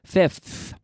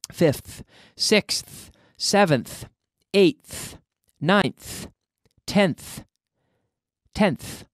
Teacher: Y sacando la lengua con ese TH que es como la Z en español, sacando la lengua siempre, fifth. Okay?